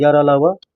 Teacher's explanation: यार अलावा वह अंतःस्थ व्यंजन है। अंतःस्थ व्यंजनों का उच्चारण जीभ, तालु, दांत, ओठों को परस्पर सटाने से होता है, हालांकि इनका पूरी तरह से स्पर्श नहीं हो पाता है।